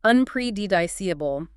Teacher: make sure to stress the third syllable.